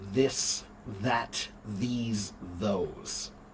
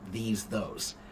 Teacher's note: If you put your fingers right here when you speak, you can feel that vibration when you're speaking. So when you do the TH sound, the voiced TH, you'll feel the vocal cords moving.